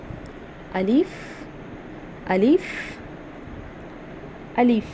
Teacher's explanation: अलिफ जो है वो हमारे मुंह के खला से अदा होता है।